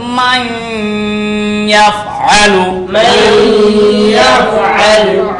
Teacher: ইয়া আসিয়াছে ইদগাম বা গুন্না চার হরফের এক হরফ ইয়া আসিয়াছে অতএব নুন সাকিনকে ইদগাম করিয়া গুন্নার সহিত পড়িতে হয়